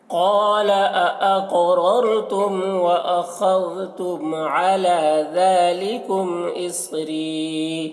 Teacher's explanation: और यहाँ पर देखिए ता वक्फ़ मुतलक की अलामत है और या साकिन से पहले ज़ेर है तो इसे एक अलिफ के बराबर खींच कर पढ़ेंगे